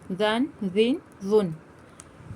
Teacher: یہ حروف لثویہ ہے، اس کو ہمیں زو نہیں پڑھنا ہے، سیٹی نہیں کرنا ہے، نرمی سے ادا کرنا ہے